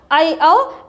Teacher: वृद्धि स्वर ऐ औ अर्ध विवृत होता है